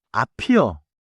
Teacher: Because 앞 ends with 비읍 sound, 앞이요 links smoothly.